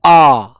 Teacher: विवत स्वर होता है जिसमें हमारा पूरा मुंह खुल जाता है